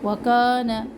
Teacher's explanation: وکان، کا الف مدہ، نون کے اوپر سنگل حرکت ہے، کانا لمبا نہ کرے نون کے زبر کو